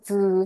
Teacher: 즈 하면 목이 떨려요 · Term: 유성음